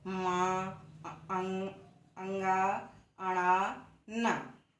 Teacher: मा, अंगा, अणा, न, हम जब इन वर्णों का उच्चारण करते हैं तब इन वर्णों से जो ध्वनियां निकलती हैं वह कहाँ से निकलती हैं, मुख के किस भाग से निकलती हैं, वह नासिका से निकलती हैं। इसमें हमको नासिका पर जोर लगाना पड़ता है, इसलिए इन वर्णों का उच्चारण स्थान नासिका है।